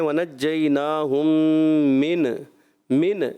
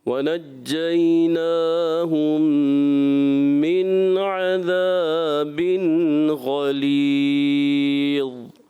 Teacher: نون کو ہلانا نہیں ہے، ایسا محسوس نہ ہو کہ آپ نے قلقلہ کر دیا، آواز لوٹتی ہوئی محسوس نہ ہو